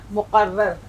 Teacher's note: تشدید بھی آ گئی، رے 2 بار پڑھی جا رہی ہے